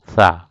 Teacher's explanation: زبان کی نوک جب سامنے کے اوپر والے 2 دانتوں کی نوک سے لگے گا تو سا ادا ہوں گے. یہ سا کا مخرج ہے.